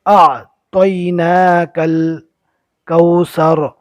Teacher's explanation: الف اور عین کے اندر فرق رہے گا، عین کو اچھی طرح حلق سے نکالنا ہے